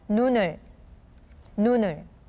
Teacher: So, for example, the word 눈, when followed by the particle 을, it read as 눈을, 눈을. So the 니은 in the word 눈을 carries on to combine with the vowel sound that follows. So instead of saying 눈을, it is much smoother and easier to say 눈을.